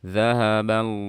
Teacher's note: Kemudian di sini zahaba. Nah, di sini ada lafzul jalalah, sebelumnya fathah dibaca tebal.